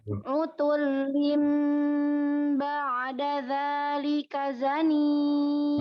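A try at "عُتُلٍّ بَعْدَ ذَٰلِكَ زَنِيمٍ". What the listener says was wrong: masih ada tuh ba'da jadi jangan dilepas ba'da tuh ba'da oke coba ulang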